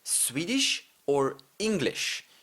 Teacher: whenever I say Swedish or English, you might notice that I have a sh sound, a little bit extra sh in there